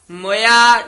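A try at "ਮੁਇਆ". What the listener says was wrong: मोया नहीं कहना, मम्मी ओंकड़ नाल मोया छेती बोलना है। मोया इथे यमक लादनी है, जित घर जाई है।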